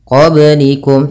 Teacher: pada lafal ba sukun ini ada bacaan qalqalah, yaitu kita pantulkan baknya